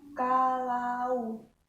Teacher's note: Yang kedua yaitu au. Hurufnya A sama U, pelafalannya au, pakai W, au.